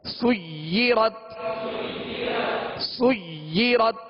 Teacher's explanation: یا کو بھی جمعوں کے ساتھ پڑھیں گے، دوہرا پڑھیں گے، دو حرف کی یعنی دیر لگے گی اس کو ادا کرتے ہوئے، یعنی دو مرتبہ پڑھیں گے، سیرت سیرت۔